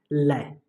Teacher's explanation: अब पार्श्व व्यंजन की बात करें तो इसमें जो श्वास वायु जीभ के दोनों बगलों से बाहर निकलती है, यानी जो पार्श्विक में जो श्वास है जीभ के दोनों बगलों से बाहर निकलती है, तो पार्श्विक व्यंजन हो जाएगा हमारा ल।